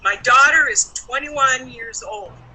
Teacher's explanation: stressed the noun is stressed the verb is was not stressed the number 21 was stressed and the last word old was also stressed · the first word, my, is a pronoun, and it was not stressed, right? My daughter. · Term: stressed words